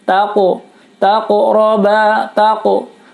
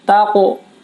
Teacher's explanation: Di sini ada huruf qaf berharokat sukun, maka hukumnya adalah qalqalah, dibaca memantul. Karena huruf qaf memantulnya bunyinya seperti o sedikit ya.